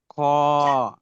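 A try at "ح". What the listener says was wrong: এটা খ নয়, এটা হা।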